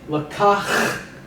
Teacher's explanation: This sound is emphatic H, fricative H.